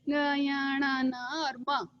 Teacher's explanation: फिर है हमारे पांचों पंचम वर्ण जो अनुनासिक कहलाते हैं, यानी वो नाक की सहायता से बोले जाते हैं